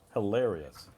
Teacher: It has 1, 2, 3, 4 syllable, yes, and it goes on the second syllable